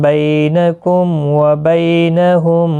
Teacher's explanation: میم ساکن کے بعد واو اظہار شفوی ہوگا